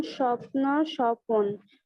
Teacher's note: উচ্চারণের সুবিধার জন্য সংযুক্ত ব্যঞ্জনধ্বনি মাঝখানে স্বরধ্বনি আসে, একে বলা হয় মধ্য স্বরাগম বা বিপ্রকর্ষ বা স্বরভুক্তি।